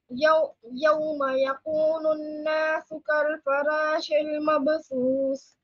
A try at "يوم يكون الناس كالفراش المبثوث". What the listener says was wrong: Raw is heavy again.